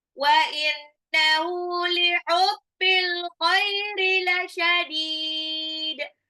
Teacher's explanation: Dalnya ini harokatnya sebetulnya doma tanwin, tapi diwakafkan. Jadi ada qalqalah.